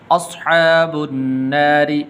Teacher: را کے نیچے زیر ہے تو اس لیے اس کو باریک کر کے پڑھیں گے